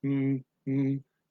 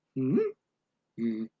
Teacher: You make the first one of the pair tone 2, which is a rising tone, and the second one is a tone 3 on down the bottom, unless it's the last syllable of the sentence or just before a comma, in which case it would be a 3 bouncy tone.